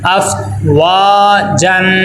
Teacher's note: الف مدہ کو ایک الف کے برابر لمبا کریں گے